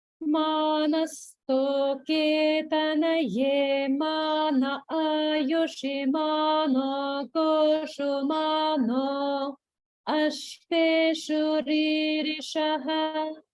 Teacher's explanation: Hopefully you were able to hear the small gap after no and before ashveshu.